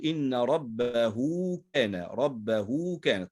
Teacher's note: ما بعدها متحرك كذلك، إذا وقعت بين متحركين، فتحقق الشرط، فنصل هذه الهاء بحرف مجانس لحركتها فتوصل بواو هنا لأنها مضمومة